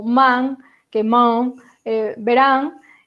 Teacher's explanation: ese sonido que aparece tanto no artículo como, por exemplo, con a N que aparece ao final de palabras como man, que man, verán, é un sonido velar